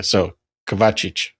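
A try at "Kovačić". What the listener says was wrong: The stress is on the O, Kovacic. That's how I heard it.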